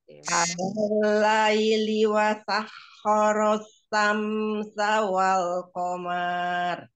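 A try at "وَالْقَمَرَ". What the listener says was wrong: wal qamar nggak panjang ya, wal qamar. Shinnya nggak terbaca ya. Alal ladhi wasakhkhara asy-syamsa wal qamar.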